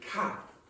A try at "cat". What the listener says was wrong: Open your mouth more.